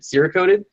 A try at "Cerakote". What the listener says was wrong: You know you're pronouncing it horrifically wrong, right? It's Cerakote. Not, not Sierra coat. No, you're saying Sierra coat.